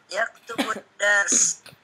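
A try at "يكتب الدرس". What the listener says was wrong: Naam.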